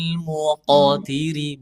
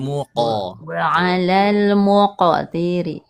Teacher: Huruf th dan huruf qof itu arahnya ke fathah pantulannya dan diringankan ya sepertial muqotiri bukan muqatiri bukan muq tapi muqoal muqtiri iya gitu arahnya ke fathah kemudian ee huruf tebal. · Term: qalqalahnya